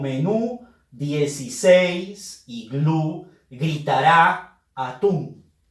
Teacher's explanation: Son palabras agudas, porque todas ellas llevan su fuerza de voz en su última sílaba y están terminando en N, S y también vocales.